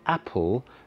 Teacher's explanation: in the word apple, the stress is on the first syllable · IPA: /æpəl/